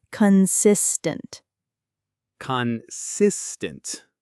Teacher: The middle syllable is the strongest one. · The stress in consistent falls on the second syllable.